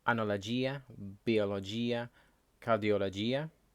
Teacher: When words end in logia the accent will be at the end